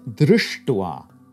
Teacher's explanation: When you have drush plus thwa, what happens is that the sha jumps to the retroflex.